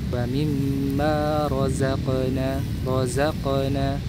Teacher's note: Ee seperti desisan razzaqo huruf qof di situ karena dia sukun maka muncullah sifat qalqalah. Dipantulkan karena dia memiliki sifat syiddah dan jahar. Tertahannya aliran suara dan tertahannya aliran udara. Maka timbullah ketika sukun ee sifat mantul ya qalqalah.